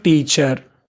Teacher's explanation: it is a disyllabic and it's a noun, so that stress on the first one